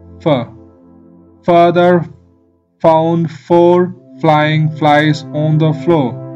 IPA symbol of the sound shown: f